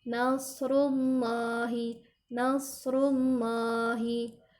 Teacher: ketika baca rullah, ujung lidah kita diletakkan atau ditempelkan ke langit-langit mulut kita.